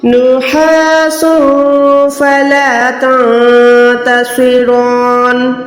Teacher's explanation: نون ساکن کے بعد تا آ گئی، اس نون کو بھی چھپایا. صاد کو موٹا کیا، رو کو موٹا کیا کیونکہ کھڑی زبر کے ساتھ ہے. نون زیر کو میں نے نون ساکن کر دیا کیونکہ یہاں پر آیت کمپلیٹ ہو رہی ہے.